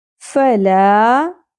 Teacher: لا مد اصلی ہے، ایک الف کے برابر کھینچیں گے